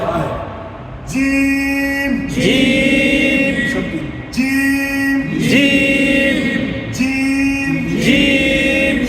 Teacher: জিম অক্ষর জিহ্বার মাঝখান থেকে শক্ত করে পড়তে হয়, শক্ত করে পড়তে হয়।